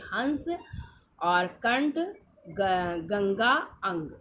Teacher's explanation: ठीक है, ये दो होते हैं अनुस्वार, है ना, अंग। इनका उच्चारण स्वर के बाद होता है, तो नाक से ध्वनि निकलती है